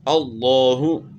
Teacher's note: لفظ اللہ کے لام سے پہلے والے حرف کے اوپر زبر ہے، تو اس لیے لفظ اللہ کا لام موٹا پڑھا جائے گا، اللہ۔ اور موٹا پڑھنے کا کیا طریقہ ہے کہ زبان کو آپ نے تالو کی طرف اٹھانا ہے، تو اس طرح موٹا پڑھنا ہے، نہ کہ آپ جو ہے نا ہونٹ جو ہے اس میں گول کریں۔